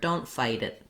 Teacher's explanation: But if I was going to say don't fight it, when I link that T, it becomes a flap. It sounds more like a D.